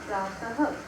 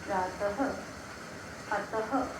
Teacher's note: विसर्ग का उच्चारण करते समय इसमें आधी ह की ध्वनि निकलती है, जैसे कि प्रातः।